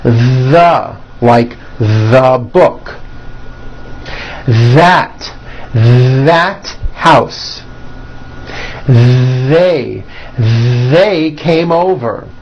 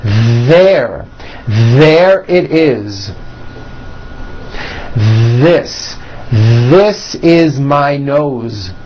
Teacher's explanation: they should all be voiced and all made with your tongue coming through your teeth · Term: voiced TH sounds